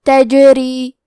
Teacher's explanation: کلمت تجری میں حرف الجیم پہ جزم ہے تو ہمیں جیم کو قلقلہ سے پڑھنا ہے · را کے نیچے زیر ہے، یہاں را کا حکم ہے ترقیق لہذا ہم حرف را کو پتلی آواز میں پڑھیں گے